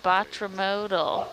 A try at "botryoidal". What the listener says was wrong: Close. There's no mode. Remember the Greek. There's a Y in there, if that helps. Botry, the Y. And an oidal.